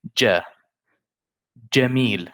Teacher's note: in Arabic Fusha, we never say Ga. We never say like English good or great. We don't say Ga. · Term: Jim